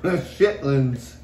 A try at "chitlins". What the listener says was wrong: Chit, not shit.